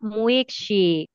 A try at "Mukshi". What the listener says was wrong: Mukshi, Mukshi, sin la I.